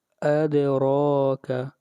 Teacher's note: وما کے اوپر مد کریں گے، اور اس مد کو مد منفصل کہتے ہیں، اور اس کی مقدار 3 الف کے برابر ہے